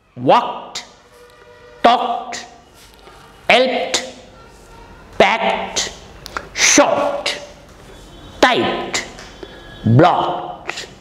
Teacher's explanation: in all these words ending with e d and monosyllabic words that ed is pronounced as ta · Two spoken English rules are applied here. L is silent and E-D is pronounced as ta, walked. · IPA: /t/